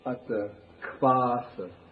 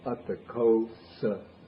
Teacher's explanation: they turn the O into a V. They join with the A.